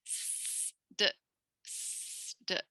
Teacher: The S might go to D, and now it's gone to a plosive and it's been voiced.